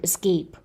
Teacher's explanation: Now we talked about, how in a two syllable verb, it is the second syllable that is stressed